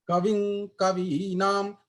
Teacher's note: तो आपका जो जो अनुस्वार का उच्चारण होगा वो क वर्ग से गटरल ही होगा